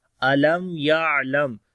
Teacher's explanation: میم ساکن کے بعد یا آگا، اظہار شفوی ہوگا، میم کی آواز کلیئر کر کے پڑھیں گے